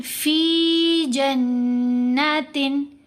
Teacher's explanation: मद्दा लेटर आवाज़ को लंबा करते हैं। कितना लंबा? 2 हरकात की मिकदार, 1 अलिफ के बराबर लंबा करेंगे